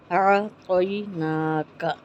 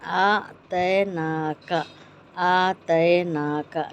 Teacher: عین کو بیچ حلق سے